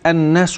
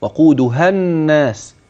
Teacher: اذا النون المشدده حينما تراها لابد ان يكون فيها غنه واضحه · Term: نون مشدده